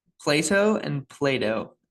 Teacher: it's a thing about American English. Often a T between vowels becomes a D or something like it.